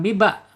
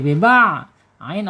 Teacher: ain ada di tengah tenggorokan ya secara makhraj